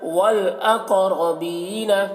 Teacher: قاف کو موٹا کر کے پڑھ رہے ہیں، را کو بھی موٹا کر کے پڑھ رہے ہیں۔